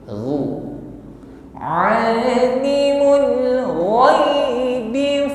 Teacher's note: Huruf gha sifatnya isti'la, bunyinya tebal ya. Tebal namun lembut ya, keluar dari adnal halqi, tenggorokan paling atas.